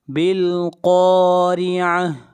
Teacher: بالقارعہ، قاف حروف مستعلیہ میں سے ہے، قاف کو موٹا پڑھا جائے گا، اور را کو باریک پڑھیں گے، اس لیے کہ را کے نیچے زیر ہے، اور آخر میں گول تا ہے، جب اس کے اوپر سٹاپ کریں گے تو یہ ہا بن جائے گی۔